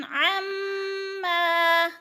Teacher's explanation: बिगाफिलिन अम्मा, मीम मुशद्दद है, जमा कर, और अलिफ मद्दा है, अम्मा पे अलिफ खाली से पहले मीम के ऊपर ज़बर है, अलिफ मद्दा एक अलिफ के बराबर खींच कर पढ़ना है